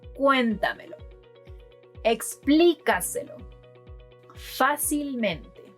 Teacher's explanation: These words stress the fourth to last syllable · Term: palabras sobresdrújulas